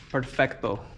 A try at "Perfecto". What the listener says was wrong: Oh, roll that R.